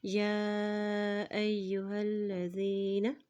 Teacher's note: या के ऊपर देखिए खड़ी ज़बर भी है और मद भी है, इसलिए इसको लंबा अदा करेंगे। हमज़ा की ज़बर को या के साथ मिलाते हुए पढ़ेंगे क्योंकि या के ऊपर शद है।